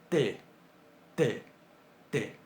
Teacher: Un sonido velarizado es un sonido en el cual, además del punto de articulación que hacemos en la boca, constringimos un poquito la garganta, más o menos a la altura del velo del paladar, que es la parte blanda, lo que está detrás del paladar duro.